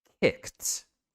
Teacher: make sure that you're not doing a sound in between that K and that T sound.